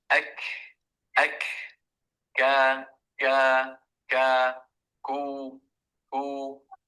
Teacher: الكاف حرف يخرج من أقصى اللسان